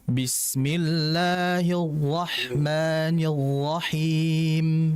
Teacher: Dia naik tapi nggak nyentuh langit-langit, sehingga tidak menimbulkan pengulangan atau getaran pada huruf ra. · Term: nggak ada getaran